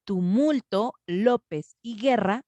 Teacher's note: Tumulto, López y Guerra tienen su sílaba tónica en el penúltimo lugar. En este caso, López está acentuada gráficamente, tiene la tilde, entonces es más fácil reconocerlo, pero todas tienen la sílaba tónica en la penúltima sílaba.